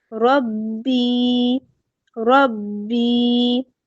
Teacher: کیونکہ یا ساکن ہے، اس سے پہلے با کے نیچے زیر ہے، یا مدہ دو حرکات ہم اس کو لمبا کریں گے